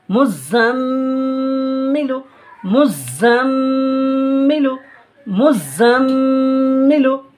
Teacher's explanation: মিমের উপর তাসদিদ হলো গুন্না সহ পড়তে হয়